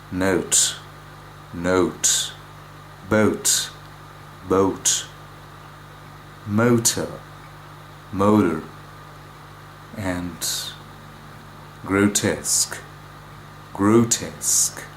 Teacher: The vowel in no, which is pronounced with slightly spread lips in British English as no, becomes a rounded vowel in American English